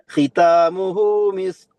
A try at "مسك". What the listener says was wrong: നിങ്ങള് കാഫാക്കി എന്ന് തോന്നുന്നു. മിസ്ക് എന്നാണ്, ക്യാഫാണ്. മിസ്ക് നമ്മള് മലയാളത്തില് കാ പറയില്ല, അതേ രൂപത്തിൽ കോ അല്ല, ക കിതാബ് എന്നൊക്കെ നമ്മള് പറയില്ലേ, കിതാബ് ആ കാഫാണ് ഓതുള്ളത് അവിടെ. കോഫിന്റെ ഒരു ഉച്ചാരണം എനിക്ക് തോന്നുന്നതെന്ന് അറിയില്ല, പക്ഷെ എനിക്ക് കേൾക്കുമ്പോ കോഫായിട്ട് തോന്നുന്നുണ്ട്.